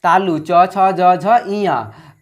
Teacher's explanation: च वर्ग है, च वर्ग का तालु हो जाएगा,